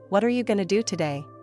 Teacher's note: The T at the end of the word what connects with the A in the word are turning what are into what cha going to becomes going to. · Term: connected speech